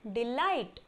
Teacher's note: डी पर कम stress पड़ेगा and लाइट पर ज़्यादा स्ट्रेस पड़ेगा. Okay, so this is unstress syllable.